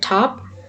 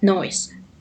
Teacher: Alveolar sounds include when we pronounce letter T in the word top